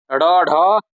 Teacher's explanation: इनके उच्चारण करते समय जीभ झटके से ऊपर जाती है। इसीलिए इन्हें उत्क्षिप्त व्यंजन भी कहते हैं।